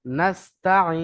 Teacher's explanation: সিন জবর নাসতা জবর তা নাসতা আইন ইয়া নুন জের নাসতা এখানে একটু বেশি টান দিতে হবে কেননা আমরা আয়াতের শেষে থামছি মাদারি মানে কি তিন থেকে চার আলি পরিমাণ টান দিয়ে পড়তে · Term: মাদ্দ আরিজ ওয়াকফি